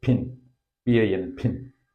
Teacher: ഒരു ആസ്പിറേറ്റഡ് സൗണ്ടാണ് ഇത് വാക്കിൽ വരുമ്പോൾ